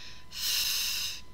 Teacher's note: Labiodental, we have the lips and the teeth come together, and those are our sounds f and v. So put your hand on your throat, make the f sound, f. You can feel that that's voiceless.